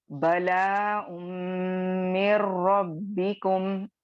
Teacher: ठीक है, बला यहाँ पे क्या हो रहा है, इदगामे ताम हो रहा है, मीमे मुशद्दद में कंप्लीट मर्ज हो रहा है, लेकिन यहाँ पे कंप्लीट मर्जिंग होने के बावजूद भी आपको गुन्ना की साउंड सुनाई देगी